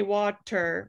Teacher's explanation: it's a tap it's more like um water in english so when we say water we don't say with a ter we say water with a little flippity flip